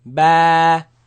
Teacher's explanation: It is elongated, it is stretched because of the Alif following it.